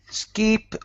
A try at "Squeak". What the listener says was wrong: And that first word, instead of skeep, it's squeak. Squeak.